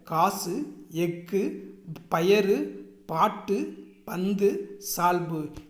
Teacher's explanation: அதாவது இந்த குசுடு துபுரு இந்த எழுத்துக்கள் இருக்கு இல்லையா, இது சொல்லின் முதலிலும் இடையிலும் வரும்போது முழுமையாக ஒலிக்கிறது. சொல்லின் இறுதியில் வரும்போது ஒரு மாத்திரைக்கு அதனுடைய ஒரு மாத்திரை அளவுக்கு பதிலாக அரை மாத்திரை அளவாக ஒலிக்கிறது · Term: குற்றியல் உகரம்